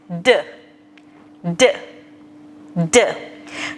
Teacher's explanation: tip of tongue touches behind your top teeth. Voice box on. तो हमारी जो tip of tongue है उसने हमारे top teeth को touch करना है, like this, D, D, D. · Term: the sound of D